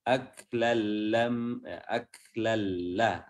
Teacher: Nah, ini idgham bila gunnah, tidak berdengung.